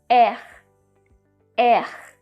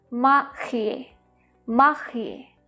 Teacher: we have a very weird R sound in French that comes from the epiglottal